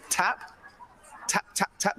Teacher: So the T in the tap and tip example is what we call an alveolar stop. What you do is you take your tongue and it pushes up against this ridge behind your teeth and blocks off the airstream from your lungs and then releases it.